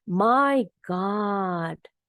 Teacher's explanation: ada penekanan di kata mynya jadi my lebih tinggi